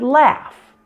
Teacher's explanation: with the F, again, you have no vibration and no sound coming from your vocal cords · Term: F sound